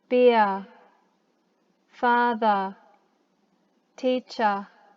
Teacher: when words end with an r sound australians say ah words ending in er sound like ah